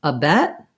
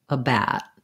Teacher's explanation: bat they're both short they both have that stopped t and i'm gonna just have my mouth more open for bat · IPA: /æ/